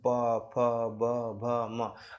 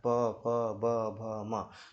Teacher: प वर्ग का मेरे भाई ओष्ठ से होता है या होठ से होता है।